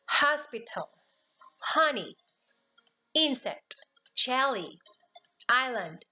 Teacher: trying to read louder on the first syllable